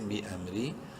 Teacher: با زیر بی، حمزہ میم زبر ام، بی ام، را زیری، را کو باریک پڑھیں گے زیر کی وجہ سے. بی امری.